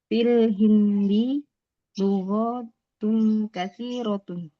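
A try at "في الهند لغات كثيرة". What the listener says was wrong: Lughatun panjangkan lughatun katsiratun.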